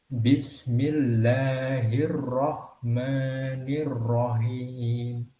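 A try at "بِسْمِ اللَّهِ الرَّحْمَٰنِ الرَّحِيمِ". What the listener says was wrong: Ya, hati-hati ketika membaca hak itu tidak boleh sampai berubah menjadi suara hak. Nah, rohim, hin, harus ringan hak itu, tidak boleh berat. Kalau berat itu ciri dari huruf haknya itu. Hin itu kan hak. Nah, jadi dia enteng kalau hak itu.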